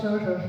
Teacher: એક તાલવ્ય મીંડાવાળો શ, લખવામાં કદાચ એ વાંચી શકતા હશે પણ બોલે તો એ સ સ સ અથવા શ શ શ. મીંડાવાળો શ, ફાળીનો શ, તાલવ્ય શ થાય. એનું ઉદ્ભવ સ્થાન તાલુ છે એટલે તાલવ્ય કહેવાય